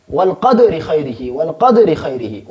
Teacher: خیرہ میں جو را ہے اس سے نیچے چونکہ زیر ہے لہذا ہم اس کو باریک پڑھیں گے